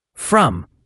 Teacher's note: And from has that subtle R sound. Not a strong rolled R like in some languages. It's more of a soft, rounded R sound.